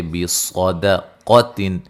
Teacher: صاد کو موٹا ادا کریں گے، قاف کو موٹا ادا کریں گے